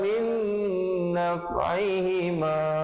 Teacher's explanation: Baru min, di situ baru idgham bi gunnah, nun mati bertemu nun. Masukkan beserta dengung 2 harakat.